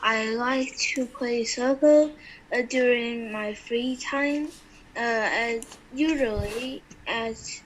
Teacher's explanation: did you hear his intonation yes his voice did go up many times that's because he was unsure of his answers the reason for